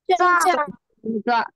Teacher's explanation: यांचा उच्चार करताना जिभेचा स्पर्श दात आणि ताळू दोघांना झाला तर त्याला काय म्हटलं जातं, दंत तालव्य